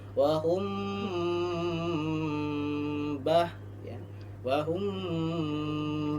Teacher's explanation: Samar artinya mimnya seakan-akan terdengar atau tidak antara dengung dan tidak. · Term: ikhfa syafawi